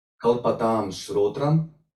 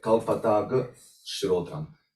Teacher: So meaning that anuswara m is dropped, and there is only g sound which is left. That's why agama anuswara, lupta agama anuswara, meaning the m is dropped.